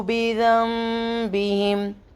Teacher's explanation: نون ساکن کے بعد لیٹر ب ہے تو نون کی آواز کو میم میں بدل دیں گے